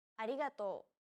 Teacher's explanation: an l sound another way of pronouncing this sound is to think of the quick tapping motion your tongue makes as it strikes the top gum ridge in words like ladder or butter · it sounds like a mixture between an r and an l sound